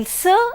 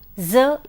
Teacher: these sounds are produced with the tongue touching the alular Ridge while s is a voiceless sound Z is a voiced sound